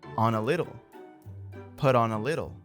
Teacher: Finally, the word on and a little get linked. So what we hear is on a little, put on a little.